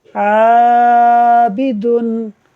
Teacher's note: عین باریک حرف ہے اور الف سے پہلے ہے تو عین کو جب باریک پڑھا جائے گا تو الف کو بھی باریک پڑھا جائے گا